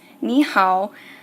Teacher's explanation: whenever I pronounce 你好, I'm not saying both third tones. I'm changing ni to a second tone. This is for pronunciation purposes, and you have to change a word that has third tone after third tone after third tone to a different tone so that you can say it faster and pronounce it better.